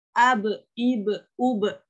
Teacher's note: Kemudian ab, ib, ub. Ya, di sini ada sukun di huruf ba, dan ba itu termasuk huruf qalqalah. Berarti harus dipantulkan. Ab, ib, ub.